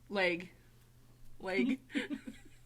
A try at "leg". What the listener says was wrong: Because you enunciate the E so much. Because your sister would say leg. Like, very... Almost sounds like lake, is what you're saying.